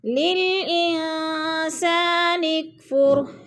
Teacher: نون ساکن کے بعد سین حروف اکفا میں سے آ گیا ہے تو ادھر غنہ کریں گے، آواز کو ناک میں لے جائیں گے